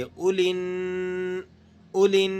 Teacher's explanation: یہاں آپ لام کو نون کے ساتھ ملا کر پڑھیں گے۔ اولن، اولن، بیچ میں سے الف اور لام ان دونوں کو آپ نے گرا دینا ہے۔